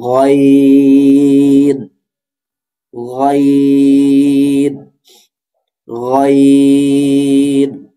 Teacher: গইন উচ্চারিত হবে কণ্ঠনালীর শেষ ভাগ হতে। জিহ্বার গোড়া যেখানে মিলিত আমাদের হলকের শেষ অর্থাৎ হলকের উপরের অংশ, সেখান থেকে উচ্চারিত হবে গইন। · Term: মোটা হরফ